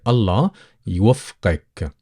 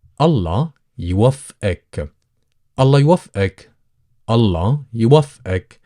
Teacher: the majority of people would tend to soften the letter qaf and replace it with a glottal stop